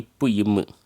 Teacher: மேல் உதடும் கீழ் உதடும் பொருந்தும் போது தோன்றும் எழுத்துக்கள்